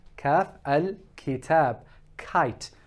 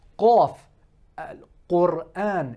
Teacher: So where we said for kaf was that it's going to the palate, here, qaf, the end of the tongue is going towards the tonsils. So right at the end of the mouth, just before the throat, okay? And if you notice, you have a thing that is called a uvula.